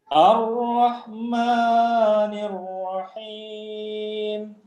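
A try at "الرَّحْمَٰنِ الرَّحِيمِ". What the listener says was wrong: Malnya 2 harokat saja, jangan terlalu panjang. Ar-Rahmanir-Rahim.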